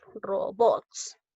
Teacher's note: En robots lleva la mayor fuerza de voz en la sílaba bots.